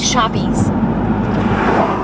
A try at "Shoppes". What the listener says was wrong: That's still pronounced shops. Yeah, it's shops. There, you don't pronounce it shoppies. Like, you know how when something is old with an E? It's not oldie.